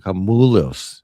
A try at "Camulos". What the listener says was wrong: with that O you got at the end. You got to pronounce that. Camulos.